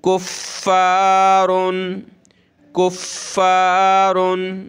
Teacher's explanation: अलिफ ज़बर फ़ा, सख्त करेंगे फ़ा को